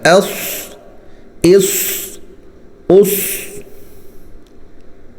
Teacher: صاد جو ہے وہ سین کی طرح ہی نکلے گا لیکن موٹا ہوگا